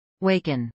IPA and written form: ˈwɛɪkən (waken)